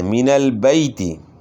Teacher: قواعد بنیادیں، جب ابراہیم علیہ السلام اٹھاتے تھے بنیادیں، من البیت بیت اللہ خانہ کعبہ کی، وہ اسماعیل اور اسماعیل علیہ السلام، من البیت، یا ساکن جو ہے اس سے پہلے زبر ہے، یائلین ہے، یائلین کو اپنے نرمی کے ساتھ بغیر جھٹکے کے پڑھنا ہے، اور اسی طرح معروف پڑھنا ہے، مجہول نہیں پڑھنا، یعنی بیت نہیں پڑھنا، بیت غلط ہے، بیتی پڑھنا ہے، من البیتی۔